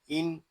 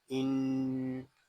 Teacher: حمزہ نون زیر ان، یہاں نون مشدد ہے اور نون مشدد کو ہمیشہ غننے کے ساتھ پڑھیں گے، اس کو ان ایسے نہیں پڑھیں گے، اس کو پڑھیں گے ان۔